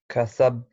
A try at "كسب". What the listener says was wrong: You didn't say the qalqala. No, that is the difference now between this one and this one. Who tells me how can I say this ba? وما كسب, not كسب. Why? I said here وتب because I have shadda. Do you notice the difference now? Whereas here I don't have shadda. So I say كسب. I don't say كسب.